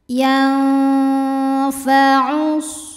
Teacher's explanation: Ikhfa awsat, sebab ada nun sukun menghadapi huruf fa. Cara bacanya, bunyi nun disamarkan ke fa disertai bunyi dengung. Dengung dan kesamarannya sama ya.